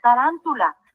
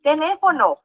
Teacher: vamos a dividir la palabra tará y nos damos cuenta que la sílaba tónica se encuentra en la antepenúltima sílaba recordando las reglas es una palabra esdrújula y lleva tilde teléfono